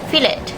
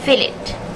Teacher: fill it the difference found is in the second syllable let the speaker pronounced the letter e as the schwa ER sound but according to RP it should be the short vowel sounds e